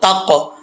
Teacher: तो इसमें कलकल होगा तो इसको अदा करते वक्त आवाज लौटेगी